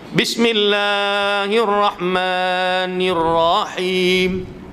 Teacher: Bismillah, la tu dia heret sampai 3, 4.